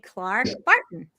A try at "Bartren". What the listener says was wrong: Bartren. Bartren. Everybody forgets the second R.